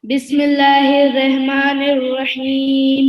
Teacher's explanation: بسم اللہ میں لفظ اللہ سے پہلے زیر آیا ہے، تو ہم یہاں پر اللہ کو پتلا پڑھیں گے، موٹا نہیں پڑھیں گے۔